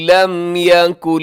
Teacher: لم یکن پہ لم میم ساکن کے بعد یا ہے، یہاں اظہار شفوی ہوگا میم پر، یعنی ہم رکیں گے نہیں، تیزی سے پڑھ دیں گے۔